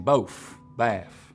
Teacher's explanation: You also get F, final TH sounds here, as in both, bath.